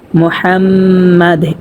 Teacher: এখানে যদি আমরা দম ছেড়ে দেই, অক্ফ করি, তাহলে দালটা সাকিন হয়ে যাবে। আমরা উচ্চারণ করব মুহাম্মাদ এরকম ভাবে।